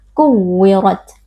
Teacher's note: Nah, huruf tak sukun memiliki sifat hams. Jadi ketika kita membaca huruf tak sukun ini, pastikan ada sedikit percikan nafas atau percikan angin, sehingga huruf tak bisa sempurna sifat hamsnya.